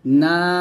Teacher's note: আমি যেভাবে টান দিচ্ছি আপনারা ঠিক সেভাবে টান দিবেন, নাতে 3 আলিফ টান দিয়ে সিনে গিয়ে বাতাস বের করবেন, নাস, এরকম ভাবে পড়বেন। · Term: মধ্যে আরজি